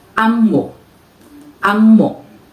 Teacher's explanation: While in Iloko, this is a verb which is stressed on the first syllable